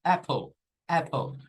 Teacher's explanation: la letra l y e al final sucede este fenómeno que se intercambia la vocal de posición con la L y resulta que la e se vuelve un shua